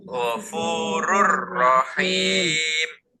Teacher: sama-sama dimasukkan ke huruf berikutnya tapi tidak dibaca dengung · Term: idgham bila gunnah